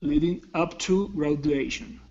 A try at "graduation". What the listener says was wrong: Now, with the word, with the D sound here, okay, you don't want to touch your tongue to your teeth saying gradu. It's gradu. It's a J sound.